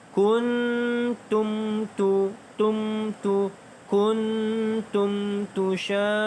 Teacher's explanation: Kemudian mim mati bertemu huruf ta. Izhar syafawi. Tidak ada dengung, bacaan jelas.